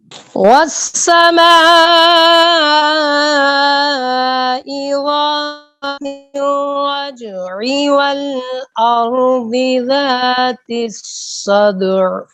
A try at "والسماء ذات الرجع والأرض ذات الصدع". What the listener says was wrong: یا آپ ذات جو ہے نا لفظ دونوں جگہ پر، ایک جگہ پر آپ نے صحیح پڑھا ہے ذات والارض ذات، لیکن جو ہے نا والسمائی اس کے ساتھ اس میں ذال کو آپ پر کر گئے ہیں.